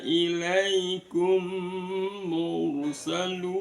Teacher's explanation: Kemudian di ilaikumnya itu ada matlin, kemudian ilaikumu, mim sukun bertemu dengan mim, maka dibaca idgham mimi atau idgham mislan